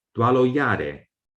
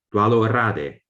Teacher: this pronunciation of ya instead of ra became accepted as a standard. So today, saying dwalo yare is not considered bad pronunciation anymore in standard Burmese.